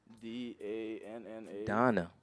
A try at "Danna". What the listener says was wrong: There's no O in there though.